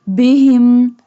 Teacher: Ha pronounced from the bottom part of the throat